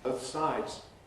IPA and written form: ˈbəʊθ ˈsaɪdz (both sides)